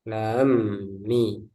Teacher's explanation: Beda kalau yang seperti lam mim, lam alif mim bertemu dengan mim, mim sukun bertemu dengan mim. Nah, ini ada idgham, mim sukun bertemu mim. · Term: Idgham mimi